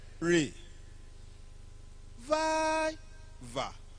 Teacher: Vi, the second syllable, receive the stress.